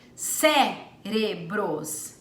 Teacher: Perceba que a sílaba tônica é a antepenúltima, portanto, proparoxítona.